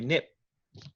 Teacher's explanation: you can see my lips close nip it is unreleased so acoustically p is three different things yet in your mind